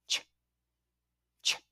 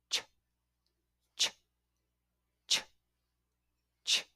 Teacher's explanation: Now, release the air to create a ch sound. and as if you're making a short quick burst of air